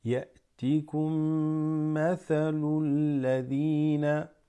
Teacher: أن تدخلوا الجنة ولما يأتيكم this hamza with a sukun. يأتيكم, this meme joins with that, so you hold it and you assimilate them together